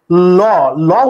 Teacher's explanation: যে ধ্বনি বা যে বর্ণ উচ্চারণের সময় জিহ্বার দুই পাশ দাঁতের দুই পাশে লাগে, এই পাশে পাশে লাগলে সেটাকে বলা হয় পার্শ্বিক বর্ণ। জিহ্বার দুই পাশ দাঁতেরও দুই পাশে লাগে, ল ল উচ্চারণ করলে দেখবা জিহ্বা এরকম নৌকার দুই পাশে এরকম উঁচু হয়ে যায়।